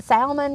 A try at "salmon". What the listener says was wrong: salmon, salmon. The L is silent. It's salmon. No, it's not salmon. It's salmon.